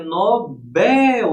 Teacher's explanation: Nobel, a sílaba tônica é a última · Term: oxítona